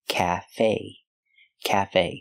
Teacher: both syllables equally Cafe the short a like black cat calf the E is pronounced with a long a like say and pay